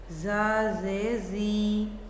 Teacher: इसको अदा करते हुए ज़ुबान नीचे वाले दांतों के पीछे रहती है और इसकी आवाज़ में हल्की सी सीटी की आवाज़ आती है।